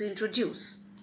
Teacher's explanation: So for example, when I speak, when I utter the word introduce, it is introduce. So the stress is on the last syllable. It's a tri-syllable word and the syllable is put on the last syllable.